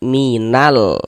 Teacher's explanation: Nah, alif lam qamariah. Maka huruf lamnya dibaca izhar, dibaca jelas, terbaca huruf lamnya minal. Nah, terbaca kan minal.